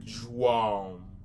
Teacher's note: You're not going to pronounce it like a regular A. You're pronouncing it more like a nasally sound. So you're going to be pronouncing like João.